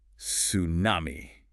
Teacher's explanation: we tend to drop the T and say something closer to tsunami